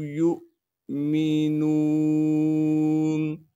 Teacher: جو چھوٹا سا حمزہ ساکن لکھا ہوا ہے اس کو جھٹکے کے ساتھ پڑھیں گے۔ میم کو بغیر کھینچے پڑھنا ہے۔